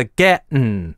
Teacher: getting становится gettin', становится [ˈgɛʔn̩], с гортанной смычкой. Важно понимать, что это считается диалектным и просторечным произношением.